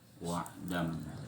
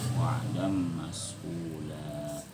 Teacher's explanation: Wa'dam, hilang huruf dan, huruf nun yang sukun pada dan itu hilang. Kenapa hilang? Karena dia masuk ke dalam huruf mim, berubah bunyinya jadi mim. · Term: idghamun bi gunnatin